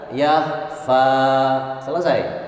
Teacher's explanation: fa hanya 2 ketukan